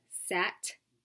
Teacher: the voiceless t sound as in the beginning of top and the end of sat